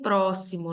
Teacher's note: Em próximo, nós temos a sílaba tônica pró, que é uma proparoxítona.